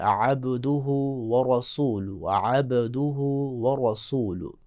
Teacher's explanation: عبدہ با پہ قلقلہ، ورسولہ را کو موٹا